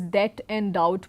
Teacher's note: Certain common English words such as debt and doubt, we know that when we pronounce it, the B remains silent